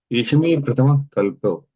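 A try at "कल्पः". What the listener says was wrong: Kalpaha. Even though it is kalpo, because we are breaking kalpaha, sandhicheda. Yeshame prathamaha kalpaha.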